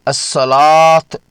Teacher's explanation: اس لفظ کو پڑھتے وقت واو کی اپنی آواز بالکل نہیں نکالی جاتی بلکہ اسے الصلاۃ پڑھا جاتا ہے۔ واو کے اوپر موجود اس چھوٹی سی علامت کو الف خنجریہ یا چھوٹی الف مد کہا جاتا ہے۔ · واو کو الف سے بدل کر 2 حرکات کے برابر لمبا یعنی مد طبعی کیا جائے گا